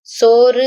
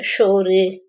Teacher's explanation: அடுத்து சகரம், தமிழ் மொழிக்கான சா வடிவம் வடமொழிக்கான ஷா வடிவம் பெறுது